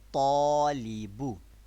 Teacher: Tafkheem in alif and tarqiq in lam. Why? Because alif is preceded by a letter that is pronounced thick tone.